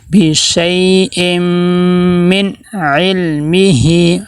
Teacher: میم حروف یرملون میں سے ہے تو ہم ادغام کریں گے مع غنہ